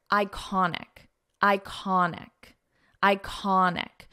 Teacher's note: So we pronounce this as an I sound, iconic. And the syllable stress is in the middle.